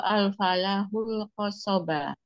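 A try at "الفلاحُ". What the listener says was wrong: Lamnya tasdid ya. Fallah.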